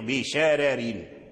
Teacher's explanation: فورش قرأ الراء بالترقيق بشرر